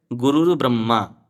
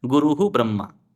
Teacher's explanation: तो हमने विसर्ग के स्थान पर क्या कर दिया? रेफ कर दिया।